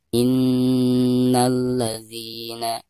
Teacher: Perhatikan nun yang bertasdid itu merupakan huruf gunnah ya, maka cara membacanya ya itu harus ditekankan disertai dengan gunnah 2 harokat. Innalladzina, tadi bacana langsung ke la ya, karena alif lam di sini dihukumi alif lam syamsiyah, jadi tidak dianggap ya.